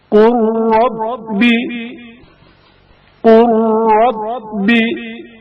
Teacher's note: لام ساکن کا رائے متحرک میں ادغام